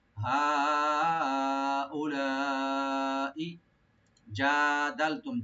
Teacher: হা উলাই জাদালতুম, জিমটাকে রাইট দিবেন। জিমের মাহারাজ হলো জিব্বার মধ্যখান তার উপর তালু হয়ে আসবে